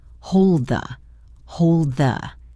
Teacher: You put your tongue in position for the D, but you move right into pronouncing the. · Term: stop D